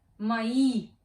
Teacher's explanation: In the word мои, we have two vowels, hence we have two syllables. The second vowel, the second syllable, is stressed, and it is и.